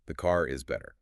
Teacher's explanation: First, we map the American rhotic target. The tongue bunches up hard twice.